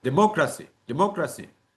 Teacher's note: the stress is usually on the third syllable from the last one